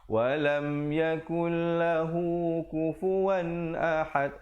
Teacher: Lahu, hu tu dua harakat aja. Jangan terpanjang. Ya, jangan terpanjang baca walam yakul lahu kufuwan.